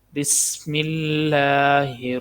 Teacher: لفظ اللہ کو باریک پڑھنا کیونکہ اس سے پہلے زیر ہے